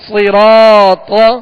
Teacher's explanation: صاد بھی پر پڑھیں گے، حروف مستعلیہ میں سے را پر زبر ہے، را کو پر پڑھیں گے، را کے ساتھ الف مدہ ہے، ایک الف کی مقدار، اسے کھینچ کر ادا کریں گے. طا حروف مستعلیہ میں سے ہے، اسے بھی پر پڑھنا ہے.